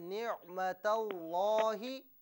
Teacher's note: लाम को पुर करके पढ़िए